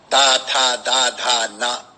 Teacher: तवर्ग ता था दा धा ना, इनका उच्चारण करें तो हमको जबान अपनी दांतों से लगानी पड़ रही